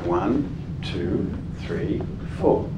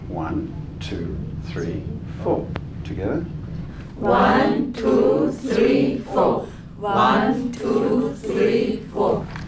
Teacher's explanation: you're saying it 1 2 3 4 very regular and all the words are strong